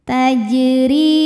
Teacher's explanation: huruf ro dibunyikan secara tarqik sebab berbaris kasrah maka dibacanya tipis